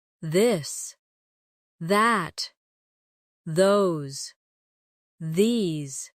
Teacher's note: the softer version of th where you let your tongue touch your teeth lightly, but use your voice.